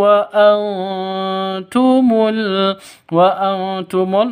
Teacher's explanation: nun mati bertemu dengan ta samar didengungkan